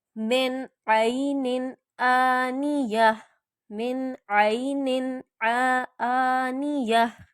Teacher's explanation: मिन या मैं कह के नाक में इसको छुपाऊंगी नहीं, नून को मैं ज़ाहिर करके पढ़ूंगी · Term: इजहार